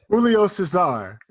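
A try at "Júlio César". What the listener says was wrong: No, your accent is in the wrong spot. See, that's the important thing when you're learning a language.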